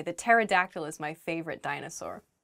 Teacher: Pterodactyl begins with a P, but we don't say the P. It just starts with a T sound.